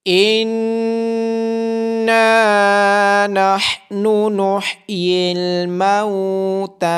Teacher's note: اِنَّا نَحْنُ نُحْيِي الْمَوْتَى، نون مشدد ہونے کی وجہ سے نون پہ غنہ کیا جائے گا، ہا کی آواز گلے کے درمیان والے حصے سے آئے گی اور تا کو کھڑی زبر ہونے کی وجہ سے لمبا کیا جائے گا۔